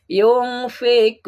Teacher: ini nun mati menghadap Fa ikhfa Ik ikhfa ya samar artinya ikhfa itu mendengung tidak jelas nunnya mendengung